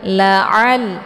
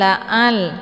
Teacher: ini ain, ya, jadi dibacanya lunak, keluarnya dari tenggorokan bagian tengah. La'al, bukan la'al.